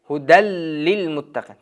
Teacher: Aynan bu qo'shib o'qigan usulda "Hudal lil muttaqin". Tag'in aytgan tanvin lam tamg'asiga idg'om qilindi. Kirgizilib o'qildi.